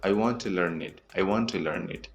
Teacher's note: First, we don't say to, we say ta